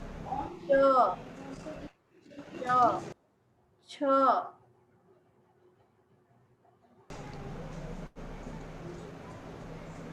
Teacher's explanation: जो हवा हमारे मुंह से निकलेगी वो हमारे तालु को छू कर निकलेगी